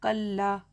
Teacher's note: अलिफ मद्दा होगा, एक अलिफ के बराबर खींच कर पढ़ेंगे।